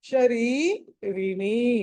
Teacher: మొదటి రా కి దీర్ఘము రెండో రా కి దీర్ఘం లేదు